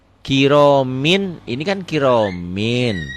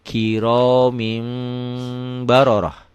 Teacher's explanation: Bunyi n-nya, bunyi nun matinya berubah menjadi mim mati. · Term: iklab